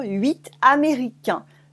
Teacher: 8 Canadiens. If you have une voyelle after it, a vowel, une voyelle, we say the T.